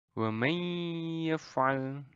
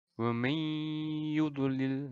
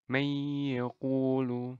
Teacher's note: Jadi kalau ada nun mati dan tanwin itu bertemu dengan mim, nun, wawu, ya, maka itu akan menjadi idgham bi gunnah atau bacanya dengan meleburkan lalu disertai dengan dengung